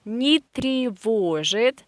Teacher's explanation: And this е, тревожит, we write е, but we say и, because it is again not stressed position, weak position. · here we have a negative particle, so it has no individual stress, and we pronounce it like a one word together.